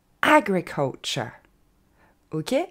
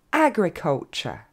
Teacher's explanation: l'accent tombe sur le a